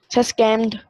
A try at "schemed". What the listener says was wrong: SCHEMED, स्कीम्ड। नहीं, स्कैम नहीं, स्कीम। स्कीम होती है ना, स्कीम लफ्ज आमतौर पर इस्तेमाल होता है उर्दू में भी, लेकिन ये अंग्रेजी का लफ्ज है स्कीम।